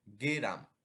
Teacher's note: গ এবং র এর মাঝখানে একটি এ উচ্চারিত হয় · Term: মধ্য স্বরগমের উদাহরণ